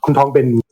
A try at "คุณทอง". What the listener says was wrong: Kun Tong is really fast. So I just say lengthening of vowels, but we hear this as a recurring theme.